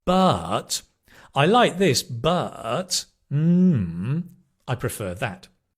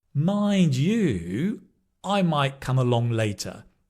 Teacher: that kind of falling rising intonation very common with connectors